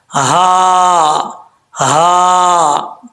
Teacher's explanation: اس ہا کا تعلق جو ہے جس حلق سے ادا ہوتی ہے وہ حلق سینے کی طرف ہے, اس وجہ سے اس ہا کو بھاری ساؤنڈ کے ساتھ پڑھیں گے.